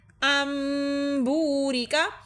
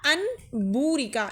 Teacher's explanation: با کی وجہ سے ہم نے نون ساکن کو میم میں تبدیل کر دیا ہے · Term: اقلاب